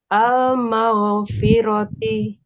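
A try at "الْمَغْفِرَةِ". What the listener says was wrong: Untuk al-maghfirati udah baik.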